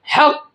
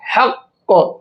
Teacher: حق، دیکھیے 2 بار پڑھا گیا نا، تھوڑا سا رک جائیں گے قاف پر تو 2 بار پڑھا جائے گا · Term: تشدید